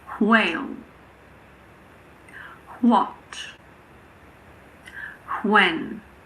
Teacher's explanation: some native speakers pronounce WH as wh, so it's like an HW